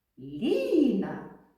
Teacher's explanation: Ліна так два на який склад падає наголос Ліна на перший можемо сказати що перший склад наголошений